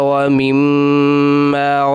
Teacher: دونوں میموں کو ملا کے اور تشدید کے ساتھ رکنا بھی ہے سختی کے ساتھ، اور ساتھ غنہ کرنا ہے ایک الف کے برابر